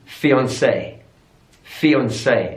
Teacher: stress on the final syllable